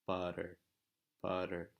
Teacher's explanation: the T in the middle is the same as a rolled or a flipped R in Spanish. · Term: weak flap T sound